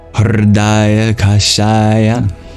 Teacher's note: In a vowel, you just voice. So curl your tongue back and then voice. That's called a vocalic liquid. Then the secret ingredient is you aspirate.